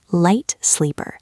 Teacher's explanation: Feel how your tongue hits the roof of your mouth on the word light